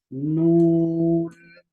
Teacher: छ दातो का पिछला जो हिस्सा है उसको जबान लगाएंगे तो अच्छी तरीके से नून की आवाज अदा होगी